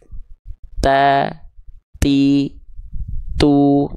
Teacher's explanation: ujung lidah kita disentuhkan ke Pangkal gigi Sari atas kita Jadi bukan ke giginya bukan juga harus melet sehingga pelafalannya seperti ini coba ta ti tu nah seperti itu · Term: huruf ta